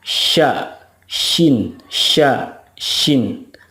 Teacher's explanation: kalau Shin itu tengah-tengah lidah bertemu atau menempel dengan langit-langit mulut